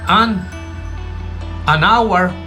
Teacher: como la H es muda, no se escucha